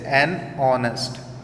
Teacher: ऑनेस्ट में देखिए H से साउंड नहीं आ रही है, ओ की साउंड आ रही है